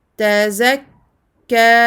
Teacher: Je montre la shadda, je termine sur deux temps.